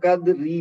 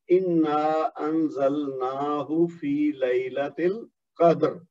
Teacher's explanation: اب را موٹی پڑی جائے گی کیونکہ میں وہاں رک گیا ہوں